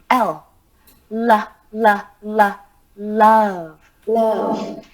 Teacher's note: When saying the sound L, air flows out of the mouth around each side of the tongue.